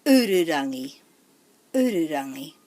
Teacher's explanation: Ururangi doesn't have any macrons, so we would put the emphasis on the first syllable, the u